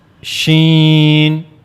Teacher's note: you have to use the middle part of the tongue and it will go towards the roof of the mouth. It will never connect though to the roof of the mouth.